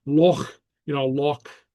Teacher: a ch is a sound that doesn't occur in English. It's a guttural.